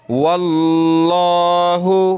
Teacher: لفظ اللہ سے پہلے واو پر زبر ہے تو لفظ اللہ کو موٹا کریں گے